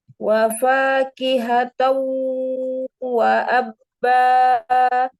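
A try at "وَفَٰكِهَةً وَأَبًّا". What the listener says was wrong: Iya, tapi sempurnakan dulu fathah mi. Wa fakihatan wa abba.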